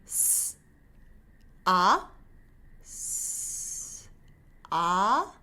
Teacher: only make the sound of the s with the breath and not your vocals